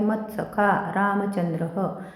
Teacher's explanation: म वर पुन्हा आघात येईल, पुढे जोडाक्षर आहे